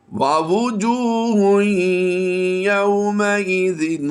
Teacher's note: تنوین کے بعد حروف یرملون میں سے یا ہے تو ہم نے اسے بھی مشدد پڑھا ہے